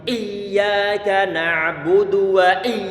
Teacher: Kita menjadikan huruf ya yang mestinya dia ngalir, kita buat berhenti di sana. Perlu untuk dibuat mengalir karena sifat huruf ya dia adalah rikhawah, mengalir suara.